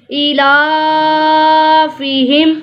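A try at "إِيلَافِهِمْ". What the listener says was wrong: हमजा के नीचे खड़ा जेर है, इसको भी लंबा करेंगे। ईलाफिहिम। ईलाफिहिम।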